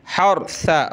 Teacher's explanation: را کو موٹا کریں گے، ثا پہ زبان نکالیں گے